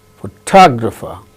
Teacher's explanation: In the case of the second word, photographer, second syllable gains stress.